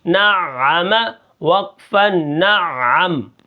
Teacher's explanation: عین کو تھوڑا گلے کے اوپر زور لگا کر پڑھیں گے